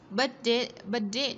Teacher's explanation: chúng ta nối âm và có T trung âm, đọc là D